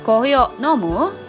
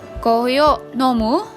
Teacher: So in the plain form, if you're talking to your close friends or your colleagues or even with your family members, you could just say, "Kohi o nomu?" Note that I remove or omit the particle ka and just use the rising tone to indicate a question.